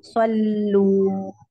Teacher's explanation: Ya, setelah lam pertamanya sukun itu tipis dulu. Sol. Baru lam yang kedua kan baru dhammah ya. Baru bibirnya maju. Sallu. Tidak dari awal sol. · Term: irja